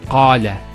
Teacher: Notice the elongation of the A sound.